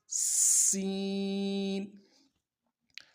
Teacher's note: اگلا حرف جو ہے سین، اس کی سیٹی باریک ہوگی، بالکل باریک سیٹی نکلے گی، سیٹی کی طرح ہی نکلے گی، اوپر کے دونوں دانتوں کو ملائیں گے اور دانتوں کے بیچ میں جو خلا ہے وہاں سے ہوا کی شکل میں سیٹی نکلے گی · اس کی سیٹی باریک ہوگی، بالکل باریک سیٹی نکلے گی، سیٹی کی طرح ہی نکلے گی، اوپر کے دونوں دانتوں کو ملائیں گے اور دانتوں کے بیچ میں جو خلا ہے وہاں سے ہوا کی شکل میں سیٹی نکلے گی، سین۔